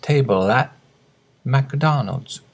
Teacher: At the end of table, the table L sound, table joins into the at, and the T disappears. Table at McDonald's.